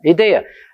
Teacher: Às vezes falam tão ligeirinho que parece que nem tem i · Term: fecha o som